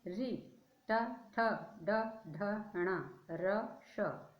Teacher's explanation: सब कहाँ से बोले जा रहे हैं, मूर्धा से